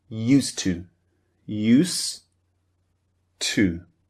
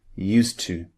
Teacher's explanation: we delete, we omit the du, the d sound at the end of used. So it just sounds like used to use to.